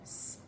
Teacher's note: that first sound in the word say we hear the s sound it's an unvoiced fricative